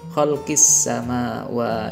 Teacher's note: alif lam bertemu dengan sin, ini adalah huruf-huruf syamsiah, maka dibaca idgham syamsiah atau masuk dengan melebur alif lamnya, tidak dibaca jelas. Khalqis sama wa, ini adalah bacaan mad tabi'i lagi 2 harokat, yakni ada huruf berharokatkan fathah tapi dengan tanda vertikal itu seakan ada alif yang tersembunyi, kita membacanya 2 harokat mad tabi'i.